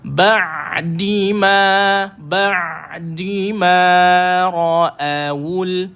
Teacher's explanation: Guru-guru dia sebut bainiyah. Bacaan ain tu betul-betul duduk di tengah. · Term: tawassut